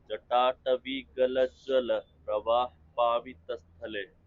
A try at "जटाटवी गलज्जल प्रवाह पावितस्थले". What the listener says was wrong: हाँ, लेकिन उसमें अभी और स्ट्रेस डालना पड़ेगा, जैसे तुम पढ़ो जटाटवी, जटाटवी, वी आनी चाहिए।